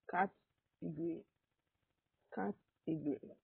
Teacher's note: Now, the letter E is a syllable by itself, the letters G, O are a syllable, and the last syllable is the letters R, Y. But the weak O sound in the second and the third syllable makes the word sound really short. So you go category. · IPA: /'kætəgəri/